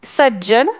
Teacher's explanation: त पुढे ज आल्यामुळे त्याचा ज झालेला आहे